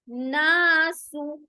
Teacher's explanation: नुन नासु, नासु, ना अलिफ मद्दा, सु सीटी की आवाज बारी पेश के साथ, इसे लंबा नहीं करेंगे